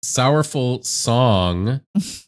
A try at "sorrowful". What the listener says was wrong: I don't know why it sounded like you said sourful.